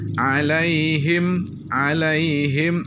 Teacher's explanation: harus langsung berhenti Tutup mulut him jangan hiem itu terkesan panjang